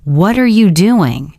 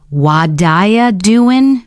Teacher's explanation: They're just connecting words together so the sounds flow smoothly, like water. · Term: connected speech